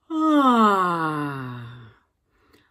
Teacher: I started that yawn with a really high pitch, which could be useful for hitting some of the higher notes in my range.